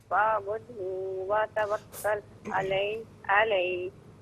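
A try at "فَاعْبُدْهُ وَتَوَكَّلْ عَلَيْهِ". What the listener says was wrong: اچھا ایک تو یہ فاعبد ہو نہیں ہے، ہو کو بغیر کھینچے پڑھیں، فاعبد ہو وتوکل.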